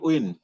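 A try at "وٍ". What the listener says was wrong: উইন না, আচ্ছা, আমরা যদি উইন বলি তাহলে তাহলে ডাব্লিউ আসতেছে না, ডাব্লিউ তো এখানে আসবে না, এখানে আসবে ভি, বি এবং ভি, তাহলে কি হবে? আমরা যদি উইন বলি, উইন, তাহলে তো দেখছে ডাব্লিউ আসতেছে। আমরা ডাব্লিউ ছাড়া বলার চেষ্টা করবো, ঠিক আছে ইনশাল্লাহ।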